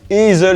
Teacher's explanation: Le son e long /eː/ en allemand équivaut au yiddish ey /ɛɪ̯/. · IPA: /ˈeːzl̩/